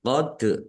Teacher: dal sukun bacaan qalqalah dibaca memantul